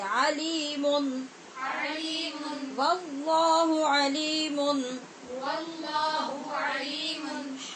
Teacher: یہاں پہ ہم اظہار کیوں کر رہے ہیں؟ نون تنوین کے بعد ہا حروف حلقی ہونے کی وجہ سے